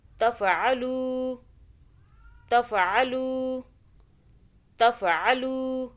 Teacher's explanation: لام واو پیش لو، یہ مدہ ہو رہی ہے واو، یہاں ایک الف کے برابر کھینچا